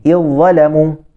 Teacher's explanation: zal dengan dha ni dia satu makhraj lah. Satu makhraj, iaitu hujung lidah.